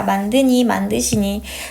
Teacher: 용언이 활용될 때 니은, 시옷 앞에서는 리을이 탈락하는 경향이 있습니다.